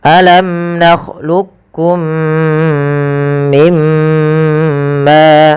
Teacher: mim mati ketemu mim, idgham mimi, cara membacanya masukkan mim pertama kedua dan ditahan